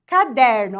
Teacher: Ó, então aqui, ó, caderno, ó, a penúltima sílaba é a mais forte